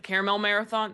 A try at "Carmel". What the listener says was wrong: Caramel. no extra A.